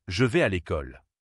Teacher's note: chaque syllabe est prononcée presque avec la même importance. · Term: langue dite syllabique